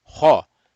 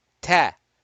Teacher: ta is not one of the rounded letters, so it'll be flat